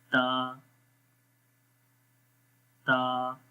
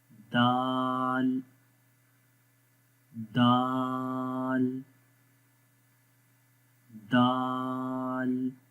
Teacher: جب زبان کی نوک ثنایا علیہ کی جڑوں پہ لگے گی تو یہ 3 حروف ادا ہوں گے